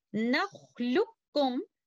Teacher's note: And in our way of hafs, we completely merge letter qaf into letter kaf